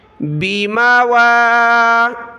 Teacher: واو کے اوپر کھڑا زبر ہے، اس کو ایک الف کی مقدار ہم نے اوپر کی طرف کھینچنا ہے